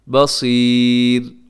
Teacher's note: را ہر صورت میں باریک ہوتی ہے